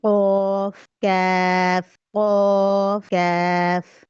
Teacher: जो दो नुक्तों वाला कौफ है ना, उसकी आवाज भारी होगी, मोटी होगी। ठीक है, और जो दूसरा काफ है वो बारीक काफ है, उसकी आवाज हल्की होगी, बारीक होगी।